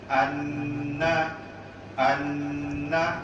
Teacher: Bila dan di mana sahaja di dalam Al-Quran, maka nun itu kena dibaca gunnah 2 harakat.